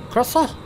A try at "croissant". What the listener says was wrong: Yeah, but you don't say the T at the end. Croissant.